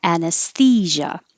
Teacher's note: as i'm making my s i push my tongue further forward for the th